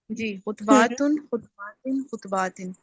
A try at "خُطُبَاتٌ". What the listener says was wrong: Very good, ماشاء اللہ.